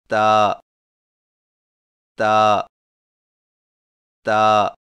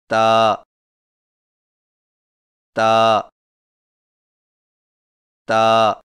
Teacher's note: تا کی ادائیگی میں زبان کی نوک کو سامنے والے اوپر کے دو دانتوں کی جڑ سے لگا کر باریک آواز میں پڑھیں